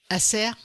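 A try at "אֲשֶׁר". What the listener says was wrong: Non, le point est à droite.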